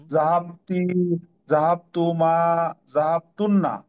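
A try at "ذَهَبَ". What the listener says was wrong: excellent মাশাল্লাহ মাশাল্লাহ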